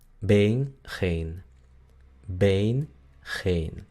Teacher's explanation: la E larga, que es muy parecida a la E del español, es frontal